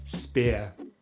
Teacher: For this diphthong we first start with the short vowel sound/I/, which we make by pushing the tongue forward in the mouth relaxing the lips and closing the jaw. And then we glide into the schwa sound, which we make by keeping our mouth relaxed, moving the tongue into the center of the mouth, and opening the jaw a little bit. So together we have ear: spear. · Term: ear diphthong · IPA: /ɪə/